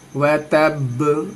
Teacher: कलकला है, बा कलकला करना है, आवाज को टकरानी है। व तब, और यहाँ पे देखेंगे वक्फे मुतलक की अलामत है, ठहरना है।